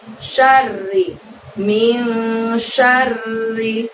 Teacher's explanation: R-nya harus double ya, terdengar bunyi R-nya double karena di situ ro tasydid.